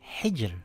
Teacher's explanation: It reads as Hhijr with light Raa.